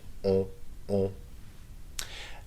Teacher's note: On is pronounced with your nose, okay? That's one of those nasal vowels